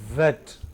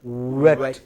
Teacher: In this case, lips are rounded.